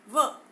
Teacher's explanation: व का उच्चारण जब हम करते हैं तो आप भी बोल के देखिएगा, व का उच्चारण करते समय हमारे जो दांत और होठ का प्रयोग होता है व, तो नीचे वाला होठ जो है ऊपर वाले दांत में टकराता है, तो व का उच्चारण बनता है, इसलिए इसे दंतोष्ठ्य व्यंजन कहते हैं।